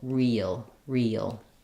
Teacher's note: front vowel to that dark L that's because when a word ends with L it often has a little bit of an uh sound or an uh sound before the l sound · as I move from the E to the I have a little bit of a linking with a Y sound there. So it may help you if you're finding that it's difficult to pronounce real naturally and smoothly, that as you move from the E to the noticing that it has a little bit of a gliding yuh in there can be helpful.